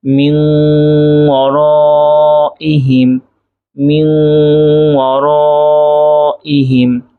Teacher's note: নুন সাকিনের পরে ওয়াও আসছে, এজন্য নুন সাকিন গুন্নাহ করে পড়তে হচ্ছে।